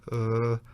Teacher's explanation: if you don't move your mouth and you just relax and you use your vocal chords like uh you hear this sort of a dull and indefinite sound that it's the basic vowel sound but it's not expressed in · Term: schwa